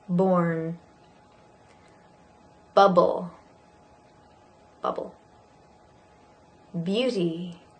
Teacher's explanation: this is a voiced b, b, b, similar to p, p. · So this is your lips together, b, and your voice.